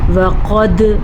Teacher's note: قاف موٹی پڑھی جائے گی